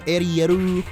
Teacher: The point is they don't have the L sound over there. So, Ariel would become Ariu